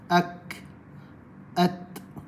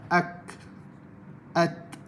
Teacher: Huruf yang paling sikit hamas, huruf kaf dan huruf ta.